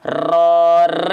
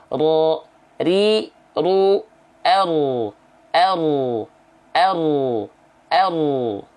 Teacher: ro itu bergetar tapi sedikit ya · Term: takrir